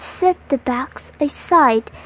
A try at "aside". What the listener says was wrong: The first syllable of aside was mispronounced, and the word was read as a side.